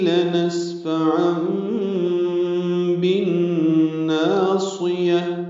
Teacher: تنوین کے بعد با آنے کی وجہ سے عام میں اقلاب ہو رہا ہے، نون کی جگہ میم پڑھیں گے